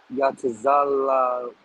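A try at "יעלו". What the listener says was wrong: Not taza. So it would be ya. So ya la ilawa, right?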